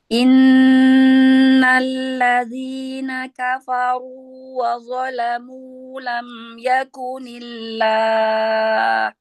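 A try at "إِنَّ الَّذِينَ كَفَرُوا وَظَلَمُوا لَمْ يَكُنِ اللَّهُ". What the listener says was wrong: Ya, kafaru, fa-nya tipiskan dulu ya. Kafaru, R-nya aja yang tebal. Innalladzina kafaru.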